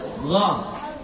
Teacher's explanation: Kalau gha itu udah di ujung kerongkongan yang sudah dekat dengan lidah